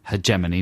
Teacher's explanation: he puts the accent on the second syllable